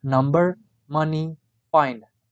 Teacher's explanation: The description of n is voiced alveolar nasal.